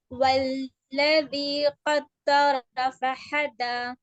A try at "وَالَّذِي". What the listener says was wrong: جی والذی یہاں پر یہ آمد ہے, تھوڑا کھینچیں گے. والذی ہاں دیکھیے ذی میں ذال پورا نہیں آ رہا, اس میں تھوڑا سا سین یا تو کچھ ساؤنڈ مکس ہے.